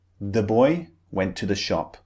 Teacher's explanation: The boy the is very unstressed. We don't put emphasis on it. So whenever words don't have emphasis, whenever they're unstressed, very often we have this target sound uh.